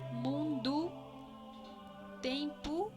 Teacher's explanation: la vocal O, cuando se encuentra al final de una palabra, adquiere un leve sonido de U